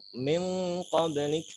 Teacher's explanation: ketika ada nun sukun atau tanwin bertemu qaf dengan kaf, nah itu suaranya baru ang.